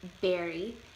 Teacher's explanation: Chicano speakers may pronounce a B sound instead of a V sound